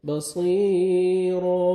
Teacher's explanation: صاد کو موٹا کر کے پڑھیں گے اور 1 سیکنڈ کھینچیں گے